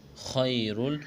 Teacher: وما عند اللہ خیر، خیا زبر خی، خا کو موٹا کرنا ہے، را لام دو پیش رول، خیر، یہاں را کو موٹا کریں گے